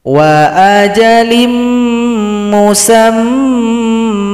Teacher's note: cara berhentinya mim yang fathain menjadi fathah. Dengungkan dulu. Kemudian kita panjangkan dua ketukan karena ini merupakan mad iwad.